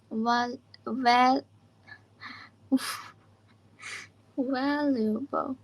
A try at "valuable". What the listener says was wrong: Oh, be careful. Wa and va, they're different. Val.